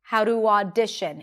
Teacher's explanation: even though in the word audition you have A and U, it's not audition, but it's only one sound, ah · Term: open a sound, open ah sound